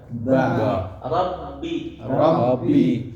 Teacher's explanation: Nah, dan ba itu kesempurnaan huruf ba karena dia ada dalam huruf asyafatain, dua mulut rapat, dua bibir rapat sempurna. Rapatnya sempurna.